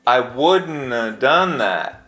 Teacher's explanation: the ‘VE sound is often reduced to “A,” so COULDN’VE easily becomes COULDN’A